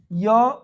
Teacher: याद रखिए य कहां से आता है? तालु से आता है।